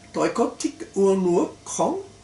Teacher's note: In the interrogative sentence, we first have 4 words that go up because of the tones, but không doesn't go up